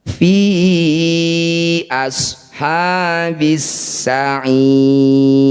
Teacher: Disebut bacaan majaiz munfasil. Fi panjangkan 5 harokat atau 5 ketukan.